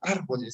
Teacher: el mayor acento de voz tiene en la tercera sílaba contando de derecha a izquierda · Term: esdrújulas